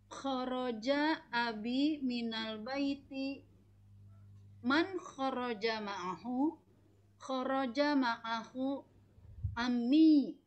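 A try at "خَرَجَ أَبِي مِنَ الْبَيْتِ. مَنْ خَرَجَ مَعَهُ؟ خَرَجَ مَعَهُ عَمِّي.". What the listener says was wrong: Aywa, naam, ahsanti.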